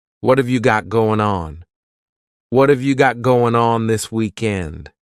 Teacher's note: That final G in the word going is going to be cut off, and we'll just say goin'.